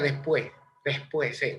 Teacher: aquí se aspira la s intercalada en lugar de decir después se pronuncia después después se aspira y suena como una jota